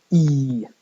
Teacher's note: an English vowel which is produced very high so it's a very close vowel and towards the front